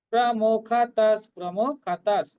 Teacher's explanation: প্রমুখতঃ বিসর্গের পরিবর্তে হাফ দন্ত উচ্চারণ করব।